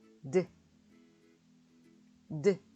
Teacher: 사진에 보이는 입술처럼 혀 끝을 윗니 바로 뒤에 있는 잇몸에 댔다가 떼면서 성대를 울려서 드 하고 소리를 내주시면 됩니다. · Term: 드 소리